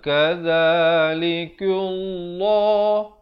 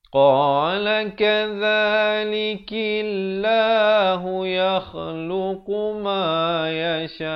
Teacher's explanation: Kaf, lafzul jalalah datang sebelumnya, kaf baris bawah dibaca nipis. Jangan pula kita baca kadzalikullah, itu tebal, salah.